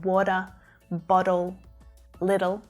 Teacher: when a T is between 2 vowels and it ends up sounding more like a D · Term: flap T sound